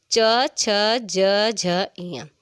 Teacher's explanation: च बोलते हैं तो हमारी टंग जो है जीभ का टच होता है अपने आपके तालु से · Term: च वर्ग